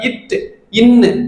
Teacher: நாவின் நுனி மேல் அண்ணத்தின் நுனியை தொடுவதால் பிறக்கும் எழுத்துக்கள்